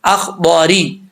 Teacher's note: ضاد کا مخرج آپ کو کئی دفعہ بتا چکا ہوں کہ زبان کی لیفٹ سائڈ جو ہے وہ اوپر والی جو داڑیں ہیں ان کے ساتھ لگے گی تو یہ ضاد پڑھا جائے گا، زبان کو اوپر اٹھانا بھی لازمی ہے، ضا، ٹھیک ہے۔ اخضاری، را کے نیچے زیر ہے تو را بریک پڑھا جائے گا